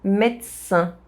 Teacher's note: The S sound modifies the D sound and it becomes a T sound.